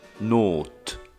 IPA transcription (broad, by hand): ˈnoːtː